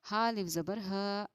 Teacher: हा अलिफ ज़बर हा, अलिफ हुरूफ मद्दा है, इसलिए कि अलिफ से पहले ज़बर है, इसको थोड़ा खींच कर पढ़ना चाहिए. और जब अलिफ हुरूफ मद्दा पर हम वक़्फ़ करते हैं तो ये वैसे का वैसा ही पढ़ा जाता है, इसलिए हमने इसको फ़ी ना पढ़कर फ़ी ह पढ़ा.